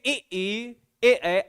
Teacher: ऐसे ही मैं आपसे कह दूं कि ए अगर आप ए की बात करोगे तो ये क्या है, ये अर्ध विव्रत के हिसाब से आधा खुला है, और इसमें भी ए आ रहा है, तो आप कहोगे ए ऐसा लगता है कि जीव के आगे का हिस्सा सक्रिय है।